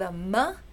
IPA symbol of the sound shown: m